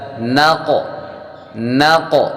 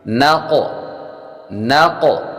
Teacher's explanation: نشطن نشطن، نون فا زبر نف، سین دو زیر سن نفسن نفسن، نون قاف زبر نق نق، قاف حروف قلقلہ میں سے ہے، اور جب حروف قلقلہ ساکن ہوں ان میں خوب قلقلہ ظاہر ہوگا۔ اور قاف حروف مستعلیہ یعنی موٹے حروف میں سے ہے تو موٹا بھی کریں گے